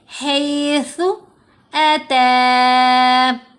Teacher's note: اب یہ ہے ثا، زبان دانتوں کے بیچ میں آئے گی، اوپر والے اور نیچے والے دانت جڑنے نہیں چاہیے، زبان دانتوں کے درمیان میں رہتی ہے، تھوڑی سی زبان منہ سے باہر نظر آئے گی اور اوپر والے جو بڑے 2 دانت ہیں سامنے والے وہاں زبان ٹچ کرے گی۔